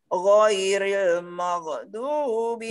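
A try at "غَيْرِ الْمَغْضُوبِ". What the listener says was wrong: Nah, maghdu masih memantul, hati-hati.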